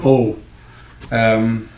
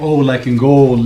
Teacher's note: the O sound but it's really really really open